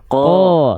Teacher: ketika ko, pangkal lidahnya masih naik, makanya yang keluar vokal o.